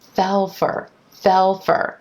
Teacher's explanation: things here notice how that dark owl sound I'm going to continue that sound the dark L right into the F consonant